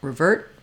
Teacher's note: that at the end of revert I've written a t there we often use what's called a stopped t or an unreleased T when T ends the word